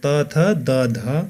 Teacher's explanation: त्यस्तै गरी अर्को दन्त्य वर्ण भनेको माथिल्लो दाँतको पछिल्लो भागमा जिब्राको टुप्पो ठोक्किएर उच्चारण हुने वर्णहरू हुन्। त्यस्ता दन्त्य वर्णहरू त थ द ध वर्ण हुन्।